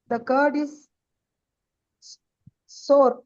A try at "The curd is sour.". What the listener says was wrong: சோறுன்னு படிக்கக்கூடாது, சவர்னு படிக்கணும். சவர்னு படிக்கணும். நம்ம இந்தியால சோறுன்னு சொல்லுவோம், அவங்க சவர்னு சொல்லுவாங்க. த கர்ட் இஸ் சவர். சோறுன்னு படிக்கக்கூடாது.